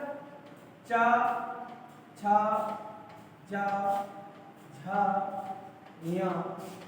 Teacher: इनको तालु से बोला जाता है, इसीलिए इन्हें तालव्य वर्ण कह देते हैं